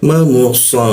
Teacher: bibir bertemu bibir, huruf mim